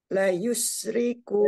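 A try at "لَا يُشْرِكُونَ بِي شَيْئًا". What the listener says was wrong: ini lanya dua, bukan yang satu harokat tapi dua harokat.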